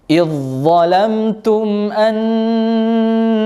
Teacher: huruf dzal yang mati langsung melebur ke huruf dha yang berharakat. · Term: idgham mutajanisain